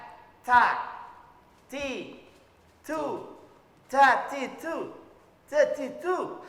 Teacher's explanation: Pertama adalah cara mengucapkannya yang salah huruf ta itu terlalu berlebihan dalam mengeluarkan anginnya. Jadi terkesan ta, ti, tu, ta, ti, tu, ta, ti, tu. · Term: hamas